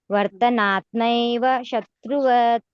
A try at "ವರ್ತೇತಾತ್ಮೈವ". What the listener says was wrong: ಎಲ್ಲ ಕರೆಕ್ಟ್ ಇದೆ. ವರ್ತೇ ಅಲ್ಲಿ ಬಿಟ್ರಿ. ವರ್ತೇತಾತ್ಮೈವ